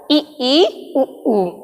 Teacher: समवृत्त स्वर वो होते हैं जिसमें मुख द्वार लगभग बंद होता है